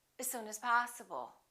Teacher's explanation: the vowel in the preposition generally becomes the neutral sound